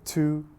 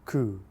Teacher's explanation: So if I wanted to double tongue, I would say tu, ku, tu, ku. Tu is the front of your tongue, ku is the back of your tongue.